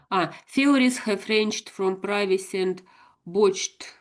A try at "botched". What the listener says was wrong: that's it. That's pretty good.